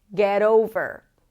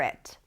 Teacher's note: The T of get becomes a flap T, and we connect it to the particle